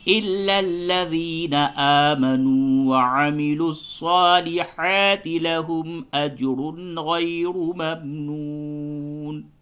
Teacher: دونوں را کو پر کر کے پڑھیں گے